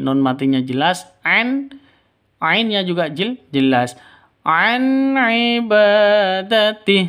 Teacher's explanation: Nun mati bertemu dengan ain jelas terang karena izhar halqi. Nun matinya jelas an ainnya juga jelas.